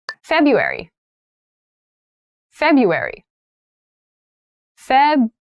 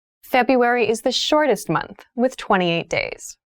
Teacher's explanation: in january february february february so february has an interesting spelling that first r isn't really pronounced